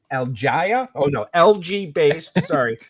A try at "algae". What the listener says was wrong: You say Algaia. Pronunciation.